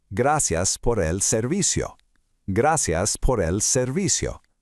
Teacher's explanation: Emphasize those soft C sounds again, making them sound just like an S.